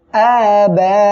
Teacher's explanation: একই শব্দের ভিতরে এভাবে হামজা আসবে তখন সে জায়গায় মধ্যে মুত্তাসিল হবে চার আলিফ টেনে পড়তে হবে